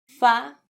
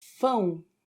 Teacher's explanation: the difference of an open sound versus the nasal sound